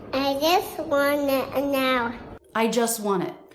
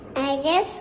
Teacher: It's really common to drop the T between 2 consonants, and that's why he drops it in just. The next sound is the W consonant. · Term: dropping the T